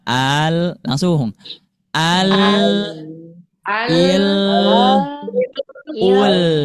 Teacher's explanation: Nah, coba A-nya jangan dipanjangkan.